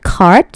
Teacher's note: of void less stops so deep occurring before a vowel are pronounced with a noticeable puff of air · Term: aspiration